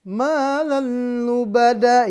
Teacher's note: Idgham bila gunnah lebur atau masuk dengan huruf lam tanpa dengung.